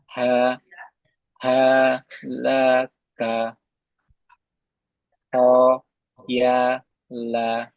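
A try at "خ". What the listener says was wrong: Kurang kotor sedikit. Ho.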